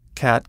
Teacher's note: The a sound has a tendency to sound a little nasal all on its own, and when other vowels are nasalized as well, it puts your whole voice in the wrong place.